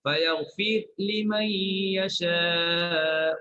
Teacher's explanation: Bagi qiraat Nafi' dia matikan huruf ra, fayaghfir matikan ra. Fayaghfir matikan ra dan izhar.